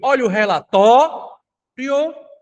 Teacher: A palavra relatório é uma palavra em que a sílaba mais forte é a sílaba tó. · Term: sílaba tônica